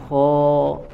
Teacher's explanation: suaranya terangkat ke langit-langit, ya, dengan dibantu oleh naiknya pangkal lidah untuk menebalkan suaranya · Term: isti'la